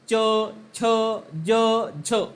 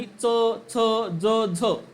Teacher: तालव्य म्हणत असताना च, छ, ज, झ म्हणजे य युक्त वर्णाचा उच्चार करावा लागतो. परंतु दंत तालव्य म्हणत असताना च, छ, ज, झ अयुक्त वर्णाचा उच्चार करावा लागतो.